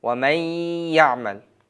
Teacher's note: Bu o'qilgan, yozilishda ko'rib turganingizlardek, va man ya'mal deb yozilsa ham o'qilishda va may ya'mal. Bu yerda nun tamg'asi ya tamg'asiga kirgizildi.